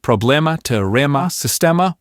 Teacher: A lot of words ending in emma, many of which come from Greek almost always take that opened e sound. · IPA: /ɛ/